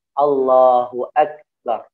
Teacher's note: ketika kaf dalam keadaan sukun, nah di sanalah harus dikeluarkan hames ya